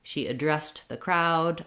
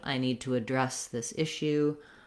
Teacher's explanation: So when you're using it in action, second syllable stress.